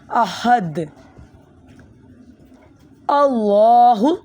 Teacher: یہ حروف یہ ہا حلقیہ ہے، آپ نے حلق سے نکالنی ہے۔